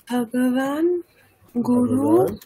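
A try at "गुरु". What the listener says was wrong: গুরু, গুরু দীর্ঘ, তাহলে উচ্চারণটাও দীর্ঘ করতে হবে, গুরু।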